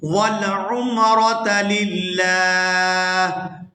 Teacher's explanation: یہاں پر وقف کریں گے تو وقف کی صورت میں ہا جو ہے یہ ساکن ہو جائے گی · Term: ہا ساکن